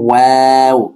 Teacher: প্রথমে মুখটা গোল গোল থাকবে, তারপরে দুই দিকে একটু ছড়িয়ে যাবে